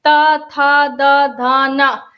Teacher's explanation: दांत से उच्चारित होते हैं। यह दंत यह वाला जो हिस्सा है दांत का यह इसमें ज्यादा सक्रिय रहता है।